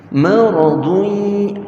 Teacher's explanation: bila tanwin bertemu dengan ya, dengung dia tu mesti di dalam ya. Kita namakan dia idgham ma'al ghunnah, ataupun nama lain idgham bi ghunnah, berserta dengung.